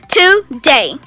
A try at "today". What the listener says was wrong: আচ্ছা তো আমরা অনেকেই এই ওয়ার্ডটাকে টুডে বলে থাকি কিন্তু এখানে ডেতে একটা স্ট্রেস হবে টুডে